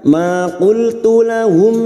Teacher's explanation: Ma qultu lahum mim sukun bertemu hamzah idhar safawi. Mim sukun dibaca jelas tanpa mendengung